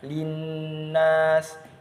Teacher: Nah, linnas. Nah, itu cara membacanya adalah dengan dengung yang panjangnya itu sekitar 1 alif atau 2 harokat